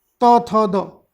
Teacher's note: क वर्ग जो है आपका कंठ से, इसके अलावा च वर्ग है ये तालु से, मूर्धा से आपका ट, और जो आपका आता है कंठ तालु मूर्धा, दंत से आपका त वर्ग, त थ द